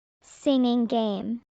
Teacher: The NG in singing and the G in game are throat sounds. They connect.